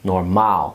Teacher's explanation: Normaal sounds a lot like normal, but you put the emphasis on the last syllable.